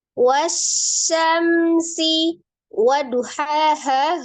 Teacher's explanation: dialirkan huruf mim sukunnya tanpa didengungkan, tanpa ditahan ya, hanya dibaca dengan jelas. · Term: izhar safawi